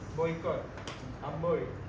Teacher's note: Untuk lambang oi, belakang lidah pada mulanya diletakkan pada keadaan semasa menghasilkan vokal belakang separuh sempit O. Kemudian lidah digeluncurkan ke arah penghasilan vokal depan sempit I, tetapi tidak setinggi sewaktu membunyikan vokal I, pita suara bergetar. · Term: diftong